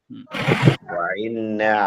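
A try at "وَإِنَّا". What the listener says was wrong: ইন্না হামজাটা স্বাভাবিক, হামজাটা অনেকটা আইনের মতো হচ্ছে, এরকম না, একদম নরমাল বলেন, স্বাভাবিক। ওয়া ইন্না।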